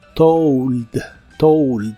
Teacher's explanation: se pronuncia como si tuviera una u después de la O told told y se usa en ideas como i told you